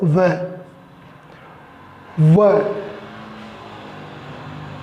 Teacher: तो दांत और होंठ से व का उच्चारण हो रहा है। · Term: दंतोष्ठ